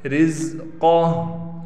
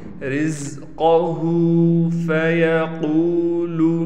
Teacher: جب وقف کر دیا پھر ہم نے ہا پر الٹا پیش کو ختم کر کے ہا کو ساکن کر دیا